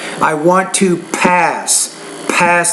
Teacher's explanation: the P you need to pronounce that with more air